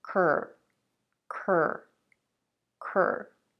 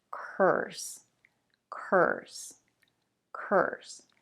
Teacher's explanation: Again, we have a stir sound as in world and girl. When you pronounce it, remember that the stir sound almost takes over the vowel. So you want to connect the first k sound with the r sound.